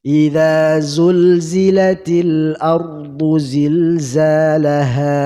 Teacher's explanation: Sifatnya adalah safir, yaitu tajamnya suara karena ia keluar dari celah antara gigi atas gigi bawah